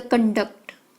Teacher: The conduct, emphasize on the first syllable.